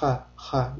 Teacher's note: Ha harfida tovush bo'g'zimizning o'rtasida hosil bo'ladi hamda biz tomog'imizdan og'zimizdan chiqqan havo bo'g'zimizdan yurganini sezishimiz kerak.